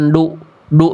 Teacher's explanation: ujung lidahnya lebih dalam ke langit-langit, bukan ke pangkal gigi dari atas. Makanya kalau kata guru saya bunyinya jadi kayak lebih tebal.